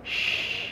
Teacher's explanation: salah satunya tafasyi, berkumpulnya udara di rongga mulut